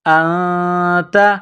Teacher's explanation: نون ساکن کے بعد تا ہے تو یہاں پر اخفا کریں گے، آواز ناک میں چھپائیں گے